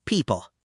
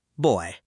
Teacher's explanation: P equals lips pop with air. People. B equals lips together. Plus, voice.